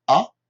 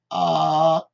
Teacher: en anglais, on peut avoir une voyelle courte, un petit peu comme si je disais A, qui est court, et A, qui est long